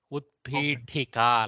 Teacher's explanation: you should actually use Mahaprana. Utpitika, like that. As much as possible, the ha should come.